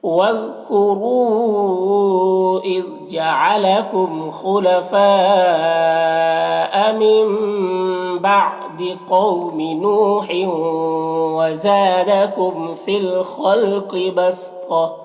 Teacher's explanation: فی الخلق، خا اور قاف دونوں حروف مستعلیہ میں سے پر پڑھیں گے